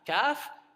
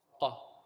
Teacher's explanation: The middle part of the tongue touches the palate for kaf. Whereas qaf, the back part, extreme back.